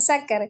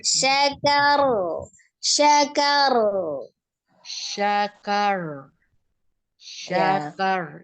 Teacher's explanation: Takrirnya cukup sekali aja syakar. Kan ada r sekali terus baru dia ngalirkan Allahnya atau tawasudnya yang mengalir itu ya, jadi bukan takrirnya.